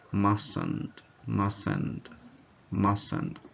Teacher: the first T is silent